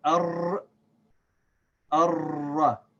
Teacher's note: The lam does not have a sakin on it, so the lam is silent. So we're going to connect this alif here with this ra that has shad.